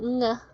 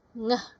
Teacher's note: Ngeh ini dia masih di nasal, tetapi place-nya adalah di velar.